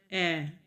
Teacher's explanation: इस स्वर के उच्चारण में जीहवा मुंह के मध्य भाग में रहती है। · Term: मध्य स्वर